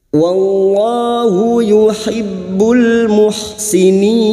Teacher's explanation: Wallahu lam jalalah yang didahului fathah, kita baca tafkhim. Wallahu yuhibbul masuk pada huruf ba yang bertasdid yuhibbul, masuk pada idhar qamariyah yuhibbul muhsinin.